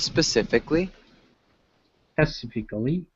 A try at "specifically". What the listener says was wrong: specifically, specifically. Okay, we don't say that I there.